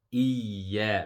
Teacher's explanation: So the ya, both of the ya, iya, it has a shadda and it also has a mud, the short mud. So we stretch it for 2 seconds and then we pronounce the ya with the shadda. Iya. Remember the shadda, the first sound will be sukun and the second sound will be the one with the vowel.